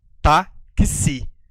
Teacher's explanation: Perceba aqui que eu pronuncio o grupo KS. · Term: dífono